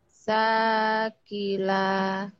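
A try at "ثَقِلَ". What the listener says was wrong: Thaqila. Sa-nya ujung lidah ya. Thaqila. Walaupun ada titiknya tapi nggak ada rumahnya. Beda dengan bawah ya. Kalau yang bawah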